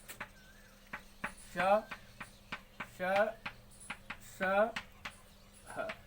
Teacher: ये संख्या में 4 होते हैं और जब इनका उच्चारण करते हैं तो हमारे मुख से इसका जब उच्चारण होता है तो एक गर्म हवा घर्षण के साथ निकलती है, इसलिए इनको ऊष्म व्यंजन कहते हैं